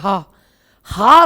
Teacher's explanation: सबसे ज्यादा घोष अगर किसी व्यंजन में पैदा होता है तो वो है हा हा सबसे ज्यादा घोष पैदा करने वाला व्यंजन है तो इसलिए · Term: सघोष